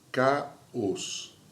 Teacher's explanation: E o hiato, duas vogais juntas, só que em sílabas separadas.